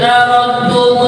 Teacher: Jadi dalnya itu seakan-akan tidak ada. Langsung yang ada adalah bunyinya ta yang bertasydid. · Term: idghamkan